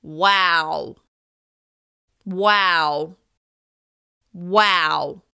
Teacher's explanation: By holding the vowel sound in this word, I'm showing shock at what I heard.